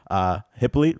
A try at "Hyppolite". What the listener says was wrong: It's pronounced Hyppolite, but The H is silent.